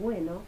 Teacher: son sonidos sonoros porque vibran las cuerdas vocales